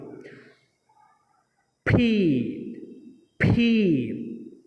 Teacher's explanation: দুইটা ঠোঁট লাগবে এবং ভিতর থেকে বাতাস বের হয়ে আসবে, এটাকে বলা হচ্ছে অ্যাসপাইরেটেড সাউন্ড। তুমি যখন উচ্চারণ করবে দুই ঠোঁট দিয়ে, তখন তোমার ভিতর থেকে সজোরে বাতাস বের করে দিতে হবে, নতুবা এটার শুদ্ধ উচ্চারণ হবে না।